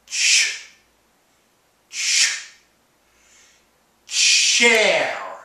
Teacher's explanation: You make the t sound, and then you blend it into the sh sound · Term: ch sound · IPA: tʃ